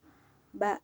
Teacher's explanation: dikeluarkan dengan merapatkan kedua bibir